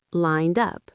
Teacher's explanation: That's a D ending. Lined up. The D connects to the vowel sound in up.